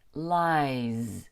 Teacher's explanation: The last sound in the word lie is a vowel sound. Actually, it's a diphthong.